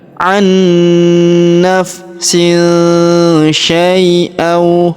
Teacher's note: huruf sya kita ayun sekali karena ya sukun di depannya atau disebut huruf linnya huruf yang lembut maka sya kita ayun dengan lembut sekali ya.